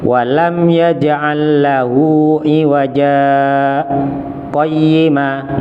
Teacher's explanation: jadi pas di iwaja itu dibaca berhenti tapi tanpa mengambil nafas. Berhentinya seperti ketika berhenti wakaf. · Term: saktah